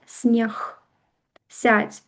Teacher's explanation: Калі наш звонкі гук стаіць на канцы слова, на канцы слова ён аглушаецца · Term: аглушэнне